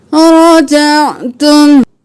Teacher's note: आइन गले के दरमियान से